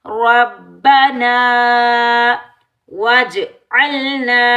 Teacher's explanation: रा के ऊपर ज़बर, रा को हम पूर पढ़ेंगे, मोटा पढ़ेंगे।